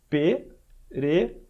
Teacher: Esse último aqui ele é mais longo. Então, breve, breve, e o último vai ter que ser mais longo. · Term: E fechado longo